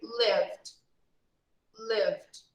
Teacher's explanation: but when we speak we just pronounce subtle d lived lived when we speak we just pronounce a very light letter d